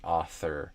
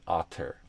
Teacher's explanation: I use a light pressure so that the sound never stops, and you get this continuous sound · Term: continuous TH sound